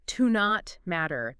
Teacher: Yeah, you might hear it almost like one word, like to not matter. The T in not kind of blends into the M.